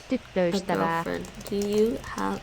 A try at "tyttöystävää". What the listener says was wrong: Tyttöystävä. Tyttöystävä. It's not quite toy.